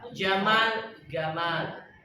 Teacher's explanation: Sama ke orang Mesir, huruf jim itu nggak bisa, huruf qaf mereka nggak bisa.